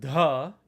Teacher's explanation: da is an aspirated voice letter